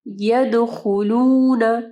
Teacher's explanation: دال کے اوپر جو ہے کلکلہ کرنا ہے